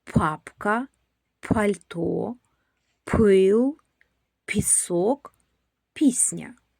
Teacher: Перший звук п. Він глухий.